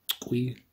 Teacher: There's a puff of air after that uvular plosive.